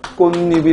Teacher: 없던 니은이 첨가됐고 그리고 그 니은이 첨가되다 보니까 이 꽃의 대표음 디귿이 이 니은을 만나 니은으로 비음화가 일어났다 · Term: 니은이 첨가됐다